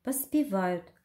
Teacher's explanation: Ударение падает на третий слог. Первый безударный гласный О – это приставка «по».